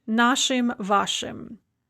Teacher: For the possessive pronouns наш, ours, and ваш, yours, the masculine and neuter ending is going to be an unstressed им